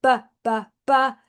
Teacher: if you put your hand on your voice box and go BBB, you will feel it vibrate.